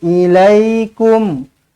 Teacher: kum mim mati izhar syafawi matikan dengan jelas matikan dengan terang